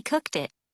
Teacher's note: notice how final T and D sounds in verbs are linked to the vowels that follow them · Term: linked sounds